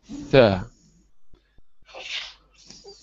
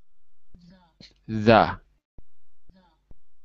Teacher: The tongue must be behind the teeth, at the very, very, very top of the teeth.